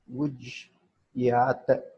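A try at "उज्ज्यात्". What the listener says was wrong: Ujjat. First one is Ujjat, Ujjastam, Ujjasuhu. the combination of Jakara plus Jha plus then Ya plus vowel. So two Jakaras are there. It is not E.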